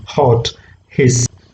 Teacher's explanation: it comes from the glottis directly it comes from the glottis it's a fricative again because there is a narrowing of the passage so it produces some kind of friction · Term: voiceless glottal fricative